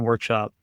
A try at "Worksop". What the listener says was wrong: Wait, start again, 'cause it's worksop, not workshop. It's not workshop, it's worksop. You said workshop as in like a wood workshop.